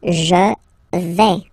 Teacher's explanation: final S not pronounced here